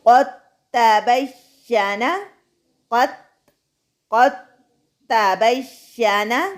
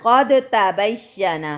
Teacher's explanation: دال کو تا میں مدغم کرتے ہوئے قوف کو ڈائریکٹ تا سے ملاتے ہوئے، یعنی تا مشدد والے حروف پر زور دیتے ہوئے قوف کو تا سے ڈائریکٹ ملانا ہے۔